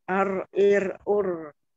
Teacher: ro-nya itu tempatkan ujung lidahnya ke gusi atas, ke ujung.